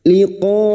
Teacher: Mad wajib mutasil kita panjangkan 5 harakat.